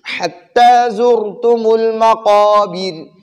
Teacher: اب زر میں را ساکن ہے، بذات خود ساکن ہے اور اس سے پہلے والے حرف پر پیش ہے، تو ہم نے قاعدہ پڑھا ہے کہ را جب ساکن ہو اور اس سے پہلے والے حرف پر زبر یا پیش ہو تو را کو پر پڑھیں گے. ادھر ہم را کو پر پڑھیں گے کیونکہ را ساکن ہے اور اس سے پہلے والے زا پر پیش ہے، تو ہم را کو اب پر پڑھیں گے.